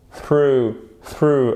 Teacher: la langue touche les dents du haut